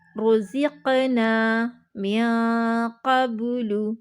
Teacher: قلقلہ والے حروف میں سے ہے اور ساکن حالت میں ہے، یعنی اس کے اوپر دال ٹائپ کی شکل بنی ہوئی ہے، تو ہم یہاں پہ کیا کریں گے؟ ویک قلقلہ کریں گے